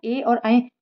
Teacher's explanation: जो छोटी ए और बड़ी ए होती है ना ए और ऐ वो कंठ तालव्य स्वर होते हैं